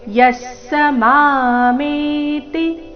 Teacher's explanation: ಯಃ ಸ ವಿಸರ್ಗದ ಅರ್ಧ ಸ, ಮುಂದಿನ ಪೂರ್ತಿ ಸ ಒಟ್ಟಿಗೆ